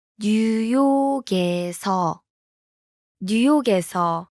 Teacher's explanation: The last consonant in 뉴욕, blends with the vowel in. 에서.